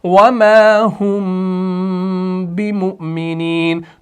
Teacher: تو میم ساکن کے بعد یہاں پر کیا آ رہا ہے؟ با آ رہا ہے. تو یہاں پر آپ کا اخفا ہوگا لیکن اخفا شفوی ہوگا